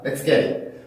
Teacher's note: 왜 T로 똑같이 끝났는데 강세 모음이 그 다음에 왔음에도 이렇게 된 소리로 하지 않고 왜 요거는 요렇게 하죠? 왜냐면 이 T 발음은 플랩의 영향을 먼저 받게 되어 있습니다. 순서로 따지면 플랩이 먼저 된 소리가 그 다음인 거예요.